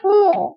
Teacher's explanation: এখানে উ এর সাথে চন্দ্রবিন্দুর ব্যবহার রয়েছে, চন্দ্রবিন্দুর ব্যবহার রয়েছে, যার কারণে উমোটা কিন্তু নাকে উচ্চারিত হবে, নাসিক্য